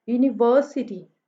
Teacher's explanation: यूनि पे भी नहीं है, सिटी पे भी नहीं है, यूनिवर्सिटी व पे जो है वो स्ट्रेस है